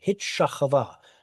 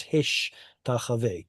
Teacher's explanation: because tav and sheen, or excuse me, sheen followed by tav is hard to pronounce, Hebrew switches the two in a phenomenon known as metathesis, and it becomes hish tachave.